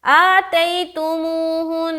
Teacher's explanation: تو آپ نے نون مشدد کا غنہ کر کے ہی رکنا ہے